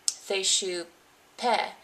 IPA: θeʃu pɛ